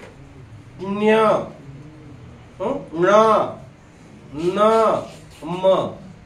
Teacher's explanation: म्हणजे काय नंतर लक्षात ठेवा तर अनुनासिक नासिका म्हणजे काय नाक फुफ्फुसातून पहिल्यांदा ध्वनी बाहेर येतो आणि नंतर नासिकेतून बाहेर येतो